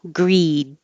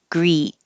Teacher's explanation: You really can't tell the difference because your tongue is going to the D or the T position, which is the same position, and you're just holding it there. So if it's the last word in the sentence or the phrase, then you won't hear it at all.